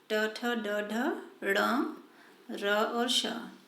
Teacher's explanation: इसमें हमारी जीभ जो है वो तालु का जो ऊपर का उठा हुआ भाग जिसे मूर्धा कहते हैं उससे लगती है। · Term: मूर्धन्य वर्ण